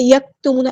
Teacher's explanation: کاف ساکن ہے، اس میں ہمز کی صرف شو ہونی چاہیے